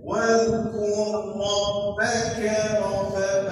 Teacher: ra yang bertemu dengan ra kemudian idgham mutamasilai jadi bunyi satu ra